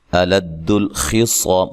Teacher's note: خا کو موٹا ادا کرنا ہے، صاد کو موٹا ادا کرنا ہے، اور یہ الف مدہ ہے، وقف کی صورت میں مد کر سکتے ہیں.